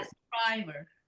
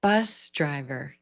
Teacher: That's the compound where we're going to put our stress on the first word.